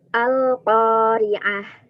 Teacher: Al-Qari'ah yang nggak sama sekali pakai suara hidung